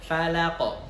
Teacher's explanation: Fa hurufnya tipis, lam juga tipis, tapi qaf itu hurufnya tebal dan memiliki sifat qalqalah karena di akhir begitu ya, dan sukun.